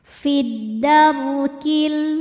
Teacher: ro sukun dibunyikan secara tafkhim sebab huruf sebelumnya berbaris fathah